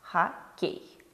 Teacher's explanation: О в безударном положении звучит как А